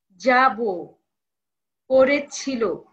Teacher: ক্রিয়াপদের অন্ত অ সাধারণত ও রূপে উচ্চারিত হয়।